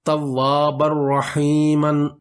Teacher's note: اس میں توابن کا جو نون کی آواز ہے وہ را میں مدغم ہو گئی، نون کی آواز ہمیں سنائی نہیں دی